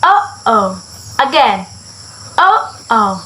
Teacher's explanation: Hold your breath for a very short moment in your throat. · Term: glutus stop